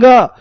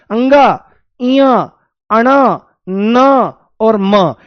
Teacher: नासिक्य मतलब नासिका। नासिका से जब इनका उच्चारण करते हैं, तो हवा नाक से भी बाहर निकलती है। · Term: नासिक्य व्यंजन